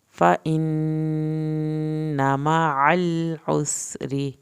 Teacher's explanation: نون کی شد پہ دیر لگانی ہے، نون کی زبر کو لمبا ہرگز نہیں کرنا